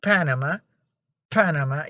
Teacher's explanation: you feel like an explosion in your mouth because there's a release of air when you pronounce it · you will feel a puff of air, and that is what we call in English aspiration. And also another thing important here is that the vocal cords don't vibrate.